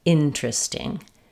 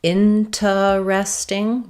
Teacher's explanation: Instead of four syllables, interesting, we typically reduce this down to three syllables.